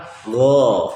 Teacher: Ghain makhrajnya di tenggorokan bagian atas. Sifatnya yang pertama jahar.